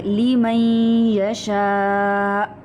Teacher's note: हाँ जी, बार नून साकिन या उसके बाद आ रहा है। हाँ जी, नून को हम मर्ज कर रहे हैं या के अंदर, हम नून यहाँ पे प्रोनाउंस नहीं कर रहे। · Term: अदगाम